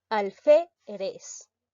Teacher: La mayor fuerza de voz recae en la sílaba fe.